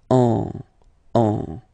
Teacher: you don't hear, sorry, any N in my pronunciation